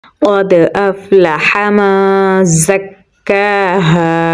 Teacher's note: قاف کو پر یعنی موٹا پڑھیں گے اور دال کے ساتھ ملائیں گے